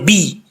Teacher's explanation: اس کو بے نہیں پڑھنا، با زیر بی، بے پڑھیں گے تو مجہول ہو جائے گا